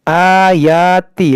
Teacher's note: حمزہ پر کھڑا زبر ہے، یا پر کھڑا زبر ہے، اس کو کھینچیں گے